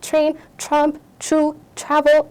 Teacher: በtr የሚጀምሩ ቃላቶች ሲሆኑ it's going to become a slight ch sound